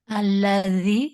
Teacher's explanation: bukan alladzi pakai za tapi pakai dza. Gigi atas ketemu sama lidah.